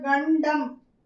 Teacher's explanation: நாவுடைய நுனி பகுதி இருக்கு இல்லையா, அந்த மேல்வாய் அன்னத்துடைய நடுப்பகுதியை போய் நல்லாவே தொடும். அப்பர் ஜாவை போய் அந்த டிப்பு போய் தொடும். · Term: 3 சுழி